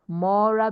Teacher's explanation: Ela mora, mora because it is more ra. So the second to the last syllable will be stressed.